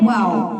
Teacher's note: दोनों होठों को गोल करने से अदा होता है